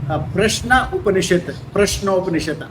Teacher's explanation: संस्कृत में क्या होता है, आ उ मिलने से ओ हो जाता है। जैसे प्रश्न उपनिषद, प्रश्नोपनिषद, आ उ मिलने से जनरली संस्कृत में ओ हो जाता है।